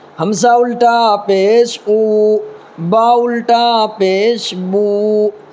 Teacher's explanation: با الٹا پیش بو، یعنی ہونٹ کو گول کر دینا ہے، اپنے ہونٹ کو جب دونوں ہونٹ کو گول کر دیں گے تو وہ خود بخود جو ہے واو ادا ہو جائے گا